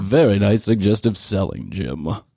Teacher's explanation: he's got that vocal fry but way at the lower tones